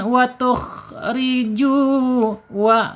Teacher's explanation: wau ini asyafatain asyafatain yaitu dua bibir